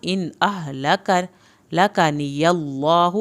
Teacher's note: अल्लाह के नाम को पुर करना है, हा की पेश को लंबा हरगिज़ नहीं करना